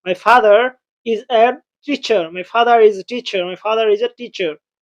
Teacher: ফাদারের শব্দটি আর আছে এবং পরের শব্দটি ইজ আছে। এর প্রথম অক্ষর আই আছে অর্থাৎ ভাওয়েল আছে। তাই ফাদারের শেষে আর এর উচ্চারণ অবশ্যই করতে হবে।